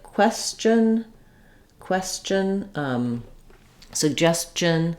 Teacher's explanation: the CH sound is made up of moving from the T position behind the teeth to dropping down to the sh position it's just quick and it gets pushed out so we also · when we have that S sound before our TION. We tend to say those more as a ch sound.